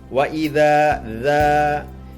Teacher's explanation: maka dibacanya harus dengan panjang dua harakat · Hukumnya yaitu mat tobi'i, karena zal berharokat fathah bertemu dengan alif, dan setelahnya tidak bertemu dengan huruf hamzah, sukun, waqaf maupun huruf tasdid. Maka dibacanya harus dengan panjang 2 harokat. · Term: Mad Thobi'i